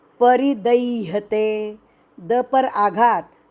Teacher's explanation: रि दीर्घ करना नहीं, रि ह्रस्व